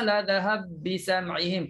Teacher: Masukkan ba pertama dalam ba yang kedua. Maka nak masukkan kena matikan dulu ba pertama. Matikan ba pertama, sabdukan ba yang kedua. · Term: kabir